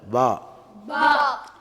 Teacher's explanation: அடுத்த பா என்பதை முன்னால் சொல்லியது போன்று உதட்டுடைய ஈரமான பாகம் இரண்டும் ஒன்றாக சேரும்போது பா ஏற்படும்.